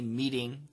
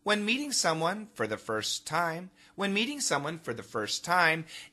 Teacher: in America we don't say meeting we say meeting that's a flap T